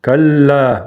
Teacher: Ударение на удвоенный лам.